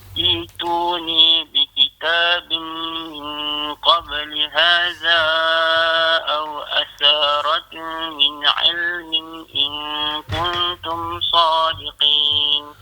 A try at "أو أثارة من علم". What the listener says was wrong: Au atharatim. Situ kena dengung. Sebab ada mim tu bertasydid. Au atharatim. Dengung dan kita kena tutup mulut. Au atharatim.